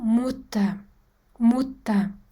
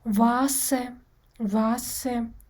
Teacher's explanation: Nemis tilida soʻz oxiridagi er birikmasidagi e harfi aniq aytilmay, yumshoq qilib a tovushiga aylanib ketadi.